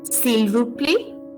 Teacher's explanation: the last T of the last word play is not pronounced